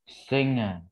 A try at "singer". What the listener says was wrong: Singer, not single. Singer. A singer.